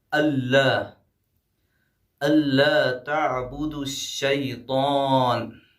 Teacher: ادغام بلا غنہ ہوگا، یعنی نون کو نہیں پڑھا جائے گا، الف کو ڈائریکٹ لام میں ملا دیں گے، آواز ہماری یعنی ہم جو ہے یہاں پہ کھینچیں گے نہیں، صرف جو ہے نون کو نہیں پڑھیں گے، الف کو لام میں ملا دیں گے.